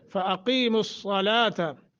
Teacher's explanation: قاف کو موٹا، صاد موٹا